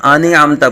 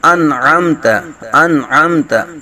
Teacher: جاتے ہیں تو صراط الذین انعم نہیں ہے بلکہ انعمت انعمت. نون ساکن کے بعد حروف حلقی میں سے عین آ رہا ہے تو یہاں اظہار کریں گے